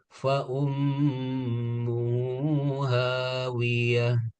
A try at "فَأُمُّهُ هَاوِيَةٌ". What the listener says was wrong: Hu-nya lebih jelas Fa'ummuhu fa'ummuhu hawiyah.